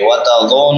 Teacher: نون کے بعد واو مدہ ہے، ایک الف کے برابر لمبا کریں گے